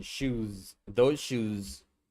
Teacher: >> Voice oo vowel. >> So when you add an s to make it plural, the s ending is pronounced like z.